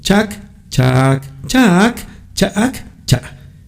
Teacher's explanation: Tenemos vocal corta, larga con tono, rearticulada, glotalizada. · son 5 timbres vocálicos en chac, chac, chac, chac, cha, y cada uno de ellos tiene un significado diferente